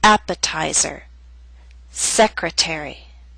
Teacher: they have both primary and secondary stress primary stress is at the beginning of these words but the teeth still falls on a stressed syllable its secondary